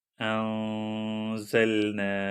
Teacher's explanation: اخفاء کا قانون یہ ہے کہ جب نون سکون اور تنوین کے بعد ان 15 حروف میں سے کوئی حرف آ جاتا ہے تو وہاں پر نون سکون کی آواز ناک سے لائٹلی پروناؤنس کی جاتی ہے